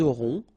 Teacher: final T not pronounced